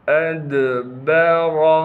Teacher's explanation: حمزہ کو دال ساکن سے ملائیں گے، دال پر قلقلہ کیا جائے گا، با کو بغیر کھینچے پڑھیں گے، را کو موٹا کر کے پڑھنا ہے۔